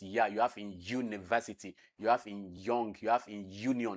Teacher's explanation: The front of the tongue is touching the hard palate to produce palatal sound, which is ya.